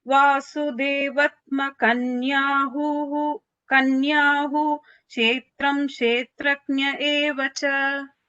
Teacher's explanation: So the vatma, the va and ka were shorter.